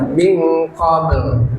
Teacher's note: kalau kita berhenti di min qabl ya, maka jangan lupa dibaca qolqolahnya dan lamnya